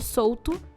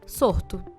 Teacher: em que o L foi substituído pelo R